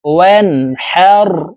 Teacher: এটি বড় হা হলকের মধ্যখান থেকে উচ্চারণ করব, কারণ এই হার মাখরাজ হলকের মধ্যখান থেকে হবে